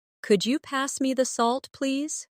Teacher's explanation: Listen to the way my voice rises on could you and falls gently at the end.